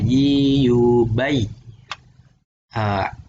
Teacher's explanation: Tengah lidah itu agak naik dikit, ya agak naik dikit tengah lidahnya, memberikan tempat keluarnya huruf tadi. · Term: huruf ya